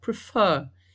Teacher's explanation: A sílaba mais forte é o fer